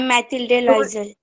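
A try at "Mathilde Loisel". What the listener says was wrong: Lewell. We are pronouncing it as Louisville. We are S, actually में French उसमें हम S नहीं बोलते हैं. It's Lewell. Matilda Lewell. Matilde भी नहीं है. It's Matilda Lewell.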